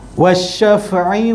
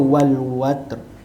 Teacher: huruf lam ada dalam tulisan tapi tak ada dalam bacaan kerana huruf selepas lam ada tanda sabdu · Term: alif lam syamsiah